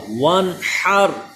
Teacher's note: نون ساکن کے بعد ہا حروف حلقی آ گیا، یہاں پہ اظہار کا قاعدہ ہوگا، یعنی یہاں پہ غنہ نہیں کریں گے بلکہ اظہار ہوگا